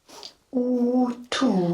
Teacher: Lábios bem arredondados. Pouca movimentação de mandíbula, a língua bem recuada, bem posteriorizada. Nós temos mais espaço aqui na frente. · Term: vogal U